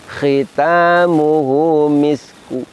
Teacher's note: Jadi miskun kita baca misku namun bunyinya lemah. Inilah wakof raum.